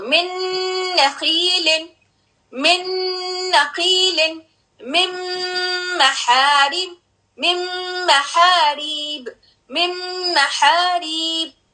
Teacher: میم and نون, تنوین کے بعد اگر میم آئے گا شدہ کے ساتھ اور نون آئے گا شدہ کے ساتھ, then you have to merge completely and with holding the sound of gunna, holding the sound of noon